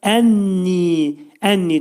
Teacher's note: nun mə'al-gunnədir, yəni burunda deyiləcək və iki səs qədər də uzadılacaq. Çünki yə təbi məddi hərf var burada.